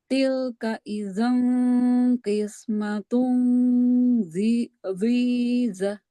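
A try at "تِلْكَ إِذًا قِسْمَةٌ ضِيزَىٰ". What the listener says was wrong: Panjang zanya. Dhiza. Dua harkat. Zanya jangan ada hanya.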